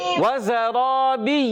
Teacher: جی ہاں پیارے بچوں، زا سیٹی والے حروف میں سے ہے، سیٹی کے ساتھ ادا کریں گے، را زبر والا ہے یعنی اس کو موٹا ادا کریں گے، اور پیارے بچوں ایک الف کھینچ کر بھی ادا کریں گے۔